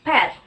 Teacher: in English we have bilabial stop consonant p in the word pet